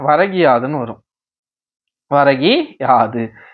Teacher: குற்றியல் உகரத்தில் உள்ள உகரம் இகரமாக மாறும் கூ என்னவா மாறிடுது ஈயா மாறிடுது வரகியாது வரகையாது வரகையாதுன்னு சொல்லிட்டே இருந்தனா அந்த கூ அதாவது உகரச் சொல் என்னவா மாறிடுதுன்னா இகரச் சொல்லாக மாறிடுது.